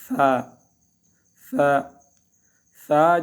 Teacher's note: ثا ثا، اس میں آپ دیکھ رہے الف، ثا ثا ثا جو ہے یہ، اس ثا کو جو ادا کیا جاتا ہے نرمی سے، زبان کی جو نوک ہے، جو سرا ہے، بالکل جو سرا ہے، اس کو ہم جب اوپر کے سامنے کے دونوں دانتوں کے جو سرا ہے اس کے نیچے سے لگائیں گے تو یہ ثا ادا ہوگا. زبان کو اندر رہیں گے تو سیڑھی کی سے آواز آ جائے گی، اندر نہیں رکھنا ہے، زبان کو دانتوں کے نیچے لگانا ہے، نیچے.